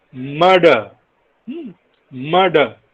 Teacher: And when it occurs word finally, it is a different kind of vowel, which is a central unrounded vowel just below half open